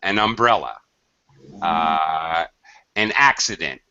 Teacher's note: to join the N consonant with the vowel of the first, the vowel sound of the first sound of the next word.